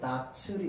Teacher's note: 자, 형식 형태소라는 말은 실질적 의미가 없다. 자, 그러니까 실질적 의미가 없는 형식 형태소가 올 때는 이 치읓이라고 하는 원래 소리가 그대로 넘어가야겠네요